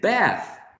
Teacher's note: Some people in the United States say bath with a trap, not bath.